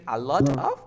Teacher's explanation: Now you have a T between two vowel sounds. What do? You pronounce the T like? R.